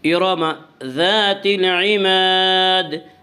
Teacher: ارم ذات العماد، ذات الف مدہ، الف ہمیشہ مدہ ہوتا ہے، الف سے پہلے ہمیشہ زبر ہوتا ہے، الف مدہ کو ایک الف کے برابر کھینچ کر پڑھیں گے